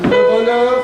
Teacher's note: Yeah, le bonheur est dans l'air, and then you need to flip the R at the end